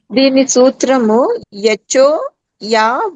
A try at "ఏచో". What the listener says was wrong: యచో కాదండి, ఏచో. పదాలు దీర్ఘం రస్వం కరెక్ట్ గా పలకండి.